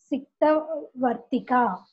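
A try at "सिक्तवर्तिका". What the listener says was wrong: Candle, yes.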